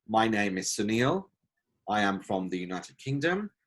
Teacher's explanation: when you're going to the end of the utterance then the tone goes down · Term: intonation